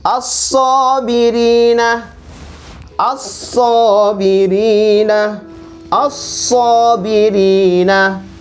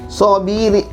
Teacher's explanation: lamnya tidak dibaca, dihilangkan, alifnya dibaca, langsung masuk di so. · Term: huruf syamsiah